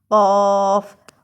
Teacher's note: اور قاف کی ادائیگی میں قاف کو، نقطے والی قاف کو ہم نے موٹا ادا کرنا ہے، ٹھیک ہے. اس میں تھوڑی سی سختی ہو، بھاری آواز ہو